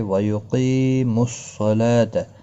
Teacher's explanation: قاف مستعلیہ ہے، قی یا مدہ ہے · لام کو 1 الف کی مقدار کے برابر کھینچ کر پڑھیں گے کھڑی زبر کی وجہ سے